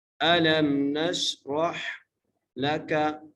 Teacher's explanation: نش را کو موٹا کر کے پڑھنا ہے، را کو ہا سے ملانا ہے